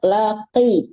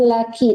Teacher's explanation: tetap qafnya itu kan qaf besar ya, laqi, jangan laki tapi laqi, tetap ke keras bacaan qafnya gitu.